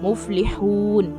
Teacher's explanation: हा को बारीक पढ़ेंगे यहाँ पर, वाव मुद्दा भी अदा करना है